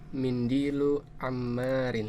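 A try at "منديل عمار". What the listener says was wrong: Iya, sahih.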